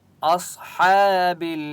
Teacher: اصحاب صاد کے اوپر سکون ہے، حمزہ کو صاد کے ساتھ ملائیں گے اور صاد مستعلیہ میں سے اس لیے صاد کو موٹا پڑھیں گے